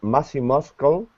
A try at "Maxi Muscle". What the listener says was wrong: Wait, muscle. Muscle. The C is silent. Maxi Muscle.